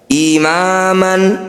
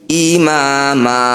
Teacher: Bunyi fathah tanwin kita ganti jadi fathah panjang. Imaman. Ketika berhenti, imama, 2 harokat saja, jangan terlalu panjang. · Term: mad iwad